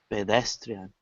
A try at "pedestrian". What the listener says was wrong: Yeah, it almost sounds like a pa, pedestrian. Pedestrian?